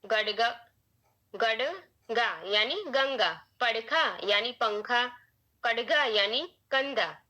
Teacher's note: शब्द के मध्य में आने पर वह अपने आगे आने वाले फॉलोइंग व्यंजन से प्रभावित हो जाता है और उसी के वर्ग का नासिक्य बन जाता है। अर्थात क वर्ग के व्यंजन के पहले ड बन जाता है।